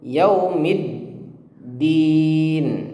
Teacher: Ingat setelah huruf mim kasroh itu ada huruf dal yang bertasydid, maka huruf mim kasroh itu langsung masuk ke huruf dal.